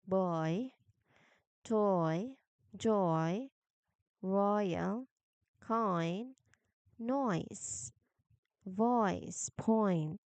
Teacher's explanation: So it's a very glide, energetic glide. So you start with deep and rounded and then end with front and flat. So you say the word boy slowly. · You start by making the O sound in door. Now, while keeping the sound going, quickly jump your tongue to the front of your mouth to make the E sound in ship. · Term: two-part jump